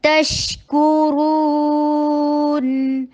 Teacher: تا کو سختی سے ادا کیجئے، شین میں تفشی دیجئے، آواز چلتی رہے